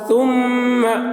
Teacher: میم کے اوپر تشدید ہے اس لیے میم میں غنہ ہوگا